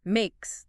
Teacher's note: Makes also has an s sound, not z.